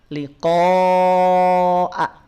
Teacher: Lihat rumusnya ya, di sini lihat rumusnya ada 5 MWPA, 5 harokat, mad wajib mutasil, dibaca panjang. Nah hamzahnya sempurnakan, bunyi hamzahnya bunyi vokal A, bukan bunyi vokal O.